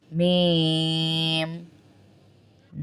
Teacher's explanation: میم ہونٹوں والا حرف ہے بند ہوں گے ہونٹ پھر کھولیں گے